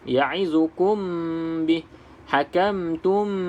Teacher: Dengung tu dengan keadaan bibir atas bibir bawah kita rapat. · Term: ikhfa syafawi